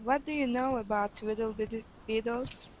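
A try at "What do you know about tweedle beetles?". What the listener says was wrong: make sure that in that tweedle rhymes with beetles so not twiddle biddle beetles but tweedle beetles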